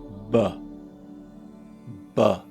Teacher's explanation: Also check for when your throat is vibrating to make some of those sounds, like b, b. You can feel that vibration in your throat, in your vocal cords. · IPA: /b/